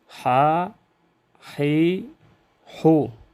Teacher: نرم آواز کے ساتھ ادا ہو، رخوت کی وجہ سے، اس میں صفت رخوت ہے۔